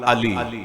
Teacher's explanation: की तरफ बढ़ने वाली हवा को जुबान ने मुतहर करते हुए जुबान की नोक मेरे ऊपर के दांतों के मसूड़े से टच हुई